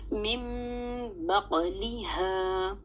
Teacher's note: نون ساکن کو میں نے نہیں پڑھا، من نہیں پڑھا بلکہ میم کی آواز سے بدل دیا نون ساکن کو. من بقلها. اور آپ کو یاد ہونا چاہیے یہاں پر قاف میں قلقلہ بھی کریں گے.